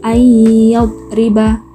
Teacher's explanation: Cara membacanya, memasukkan huruf nun disukun pada huruf ya dengan mendengung panjang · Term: idgham bi gunnah